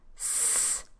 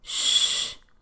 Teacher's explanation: the first sound in sick is produced farther front in the mouth, and the first sound in show is produced farther back in the mouth. But they are both made in more or less the same way, by pushing air through a narrow constriction between the tongue and the roof of the mouth.